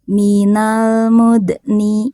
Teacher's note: sukunnya sukun asli ya, maka dipantulkannya sedikit aja